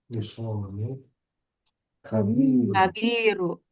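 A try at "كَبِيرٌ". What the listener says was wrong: Kabirun. Run ya, tanwin ya.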